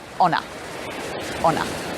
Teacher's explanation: There's 2 words there, on a, that come between stressed words. We push those together.